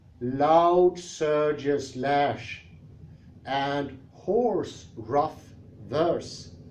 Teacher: More objective is the second couplet's metrical pattern, which makes us read more slowly. The three neighboring stresses in, loud surges lash, and hoarse rough verse, do delay us a little